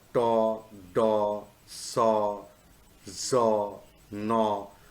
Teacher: And the sounds are to, do, so, zo, no. Of these, to and so are voiceless, whereas do, zo, and no are voiced. So lastly, I would like to say that the front part of the tongue, and it will have a kind of friction on the alveolar ridge.